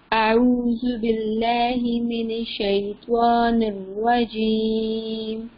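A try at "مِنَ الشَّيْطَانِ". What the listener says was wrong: من الشیطان کو موٹا پڑھتے ہیں مین الشیطان. اب مجھے لگا جیسے آپ کے منہ سے ایسے نکل گیا ہے مین الشیطان الرجیم.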